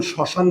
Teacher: শব্দের প্রথমে যদি মফলা থাকে তাহলে ম এর উচ্চারণ হবে না। কিন্তু এই মফলা বিশিষ্ট বর্ণের উপর চন্দ্রবিন্দু দিতে হবে।